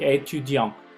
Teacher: Étudiant, si se fijan, termina con T. Entonces no me pronuncien esa T, jamás.